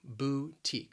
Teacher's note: it has two syllables the stress again is on that second syllable